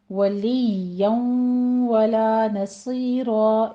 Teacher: اظہار شفی، میم ساکن کا۔ ولییا ولا نصیرا، ولییا ولا نصیرا، یا کی تشدید ادا کرتے ہوئے اوپر تنوین کا قاعدہ ادغام الغنہ ہے، یہاں بھی 2 کاؤنٹ کریں گے